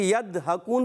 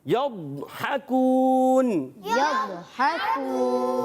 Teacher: ضاد کی ادائیگی کلیئر رکھنی ہے، ڈال بھی نہیں پڑھنا، دال بھی نہیں پڑھنا، زواد بھی نہیں پڑھنا۔ یضحکون، یضحکون، جی ہاں، حافت اللسان یعنی زبان کا بغلی کنارہ جب اوپر کی داڑوں کی 5 داڑوں کی جڑوں میں لگتا ہے تو یہ حرف ادا ہوتا ہے۔